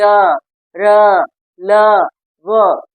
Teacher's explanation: ध्वनि अंदर से, गले से मतलब अंदर से आती प्रतीत हो रही है। ये इसमें कोई स्पर्श नहीं हो रहा है। य, र, ल, व, इसको जो है हम कहते हैं अंतस्थ व्यंजन, और इनकी संख्या 4 होती है।